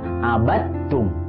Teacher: Artinya dimasukkan karena bertemu dengan huruf yang sejenis. Ya, jadi dalnya tidak perlu dibaca, langsung masuk ke huruf ta. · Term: idgham mutajanisain